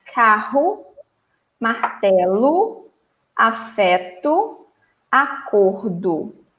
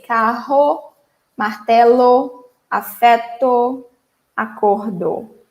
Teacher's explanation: in Brazil, the letter O in general, in the end of words, normally sounds like U.